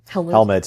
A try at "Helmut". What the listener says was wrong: It sounds like you're saying helmet. Helmut.